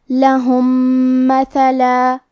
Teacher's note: یہاں حکم ہے ادغام متماثلین صغیر اور ادغام کا معنی ہے حرف کو حرف میں داخل کرنا تو ہم پہلے میم کو دوسرے میم میں ملا کے ایک ہی میم غنہ اور تشدید کے ساتھ پڑھیں گے · کلمت مثلا میں سا کی ادائیگی زبان کے سر اور اوپر والے دانتوں کے اندرونی کناروں سے ہے